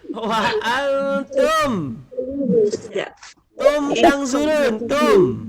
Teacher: Izar Safawi jelas dengan cara merapatkan bibir tanpa dengung.